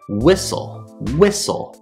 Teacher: we have two syllables whistle and the stress is on the first syllable